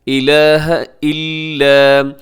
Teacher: لا الہ، یہاں پہ جو مد ہوتی ہے اسے مد منفصل کہا جاتا ہے۔ الہ الا، الا اس میں جو لام ہے یہ لام باریک پڑھا جائے گا، اسے آپ موٹا نہ کیجیے گا